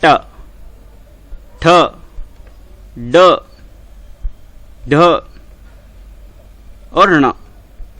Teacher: आपकी जीभ में थोड़ा सा रोल होगी, या हम कह सकते हैं उसमें बैंड आएगा, या थोड़ी सी उसको घुमाना पड़ेगा आपको। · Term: मूर्धन्य